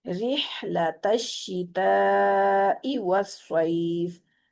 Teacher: अब री पढ़ते हुए आपने होंठों को चीरना है